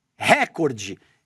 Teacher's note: pronunciando a palavra de forma errada, dando ênfase na primeira sílaba, recorde. Ele alegra que essa pronúncia incorreta poderia influenciar o público e pede uma indenização de R$ 10 milhões de reais.